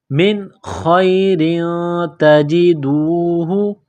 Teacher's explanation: تنوین کے بعد تا ہے، حروف اخفا ہے تو یہاں تنوین پر غنہ کریں گے، آواز ناک میں چھپائیں گے۔ من خیر تجدوہ، تا کو باریک کرنا ہے، تجدوہ عند اللہ، عین کو نون کے ساتھ پلس کرنا ہے، نون ساکن کے بعد دال ہے، حروف اخفا ہے تو یہاں آواز ناک میں چھپائیں گے، غنہ کریں گے، اس ناک میں آواز چھپانے کو اخفا کہتے ہیں۔